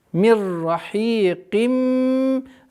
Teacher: Здесь у нас полная назализация с полной ассимиляцией